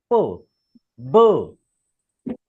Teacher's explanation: बायलॅबिल sound means your upper lip and lower lip comes together, both lips.